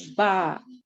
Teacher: there was no elevation of the tongue the back tongue did not move